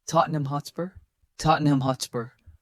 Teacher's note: Focus on reducing the ham to NUM and softening spur.